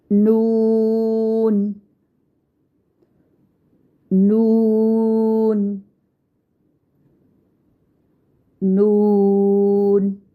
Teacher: ज़बान के बारीक किनारे को ऊपर वाले दांतों के मसूड़ों से लगाकर अदा करते हैं और होंठों को चोंच की मानिद गोल करते हुए बारीक आवाज़ में अदा करेंगे।